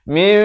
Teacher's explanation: Faqalafa min, di sini dibacakan dengan iqlab dua harakat, ditukarkan daripada bunyi min kepada bunyi mim